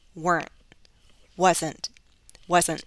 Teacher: changing the true teeth to a glottal stop weren't wasn't wasn't you cut off the sound okay with the glottal stop · You cut off the sound, okay, with a glottal stop.